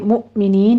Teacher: حمزہ پر جھٹکا دیتے ہوئے